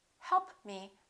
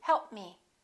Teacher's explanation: When a consonant is a stop, for example, p, b, t, d, and another consonant follows, even if the consonant doesn't have the same point of articulation, make sure you hold that first consonant and kind of link it